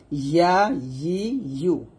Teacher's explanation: আর ইয়া গলা থেকে উচ্চারণ হবে না, ইয়া আসবে জিহ্বার মধ্যখান উপরে তালুর সঙ্গে লাগিয়ে